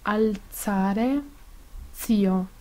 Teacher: En italiano corresponde a Z, que es sorda en palabras como alzare, zio.